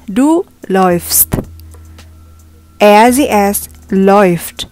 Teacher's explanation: A umlaut dan U dibaca OI.